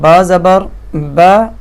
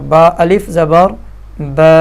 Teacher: اس کی صرف زبر کی آواز با زبر با ایک حرکت کی مقدار تھی، اب جب اس کے ساتھ الف مل گیا تو اس کی 2 حرکت کی مقدار بن گئی، تو با زبر با اور با الف زبر با، اس طرح آواز نکلے گی۔